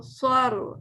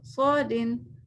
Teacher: ٹھیک ہے، رو بھی موٹا ہوگا، رو کے وقت بھی زبان پیچھے سے اٹھی رہنی چاہیے، کیونکہ رو جب ساکن ہوتا ہے اور اس کے پیچھے زبر ہوتا ہے نا، تو رو کو ہم موٹا پڑھتے ہیں. ٹھیک ہے، فرسٹ کیس میں ہم رو کو موٹا پڑھیں گے، مگر جو دوسری کیس میں نا رو دو زیر رن ہے نا، یہ ہم باریک پڑھیں گے، اس لیے کہ اس کے نیچے زیر آ رہا ہے، چاہے ایک ہو یا دو، اس سے فرق نہیں پڑتا، ہم اس کو لائٹ کر جاتے ہیں.